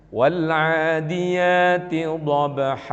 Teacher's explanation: al-adiyat inilah nama daripada ee salah satu jenis dari mad thai'i sekali lagi bacanya ngak boleh panjang-panjang cukup dengan dua harakat saja waladiyati dobha tuh dua dua harakat atau satu Alif enggak boleh